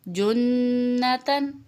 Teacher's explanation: شد آ جائے تو آپ نے غنہ سے پڑھنا ہے، ناک میں آواز کو ٹھہرانا ہے